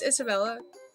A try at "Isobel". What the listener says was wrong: I'm pretty sure you would just pronounce that Isobel. Instead of Isabel, Isobel.